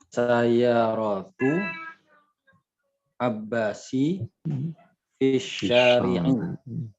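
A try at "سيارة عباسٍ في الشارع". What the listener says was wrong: Nah, sayyaratu Abbasin ya. Nih pakai tanwin ya. Fisyari.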